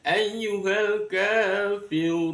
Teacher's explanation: namanya menjadi mad arid lisukun. Dibaca sepanjang lima harakat.